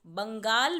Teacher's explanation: बंगाल में ब के बाद अंग की आवाज़ आ रही है, इसीलिए उस अंग को दिखाने के लिए हम ब पर बिंदी लगाएंगे और शब्द बनेगा बंगाल।